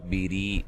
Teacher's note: ری یا مدہ ہے، وقف کی صورت میں مد کر سکتے ہیں